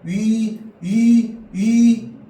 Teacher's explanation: 분명히 단모음이라서 발음할 때 위 변하지 않아야 되거든. 입술 모양이.